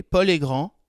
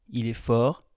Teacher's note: in the masculine form, I did not pronounce the D in Paul est grand, the T in il est fort, and the S in il est gris.